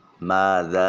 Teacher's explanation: یہ قو نہیں کریں گے۔ نتقو ماذا، میم الف خالی از حرکت اور اس سے پہلے والے حرف میم کے اوپر زبر ہے، الف مدہ ہے، ایک الف کے قائم مقام لمبا کریے